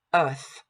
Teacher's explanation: We also see that there's no American R in here. This is an English-British piece, so we just negate that R. · Here we know that the TH in the word earth is pronounced voiceless.